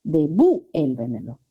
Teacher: La sílaba tónica es vuel